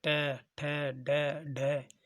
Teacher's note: जब हम बोलते हैं तो हमारी जीभ जो तालु के ऊपर लगती है उसे मूर्धन्य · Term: मूर्धन्य व्यंजन